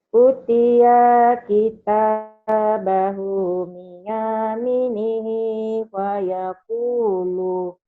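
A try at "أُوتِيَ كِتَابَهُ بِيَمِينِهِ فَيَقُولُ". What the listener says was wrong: Gak ada yang panjangnya nih Bu ya. Ibu kayaknya ini panjang. Kenapa panjang? Karena domah dengan waw mati. Kita ini panjang karena madasli. Hu ini panjang karena masilah kosiro. Biyami ini matobi karena kasro dengan diamanti.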